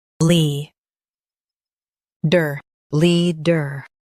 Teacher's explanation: Leader. Emphasize lee and keep der soft. Lee. Der.